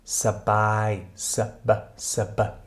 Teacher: mit kurzem Lufteinschluss zwischen den zwei Konsonanten S und B. Also nicht sb, sondern sb, sb. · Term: Pseudocluster